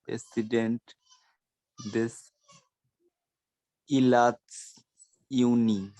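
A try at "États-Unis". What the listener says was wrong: জেতাজুনি। ইলাত কই, ETATS লেখা।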